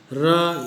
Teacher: Number 6, लुंठित ध्वनियाँ, जिसे rolled या ट्रिल्स कहते हैं। जीभ की नोक को कुछ बेलन की तरह लपेटकर या लुंठन करके तालु का स्पर्श कराकर यह ध्वनि उत्पन्न की जाती है।